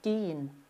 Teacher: Aqui a gente sai de um E, estica ele e cai num outro E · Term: Ezinho estendido